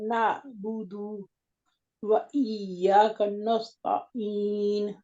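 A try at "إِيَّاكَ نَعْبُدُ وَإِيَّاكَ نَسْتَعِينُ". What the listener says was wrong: نون کو موٹا نہیں کرنا، باریک ہے، نستعین،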